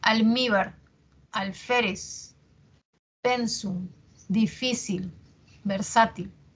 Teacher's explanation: presentan la mayor fuerza de voz en la penúltima sílaba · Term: graves o Llanas